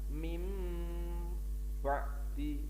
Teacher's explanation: huruf nun atau huruf n itu ditukar menjadi mim, dibalik menjadi mim atau m. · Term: iklab